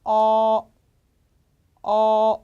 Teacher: 우리말에 없는 발음 이에요 우와 어의 중간 정도인데 입을 크게 벌리고 어 라고 하시는 발음입니다